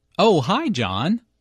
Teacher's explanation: notice the rising intonation here is excited to hear from John and is very pleased that he called her I was wondering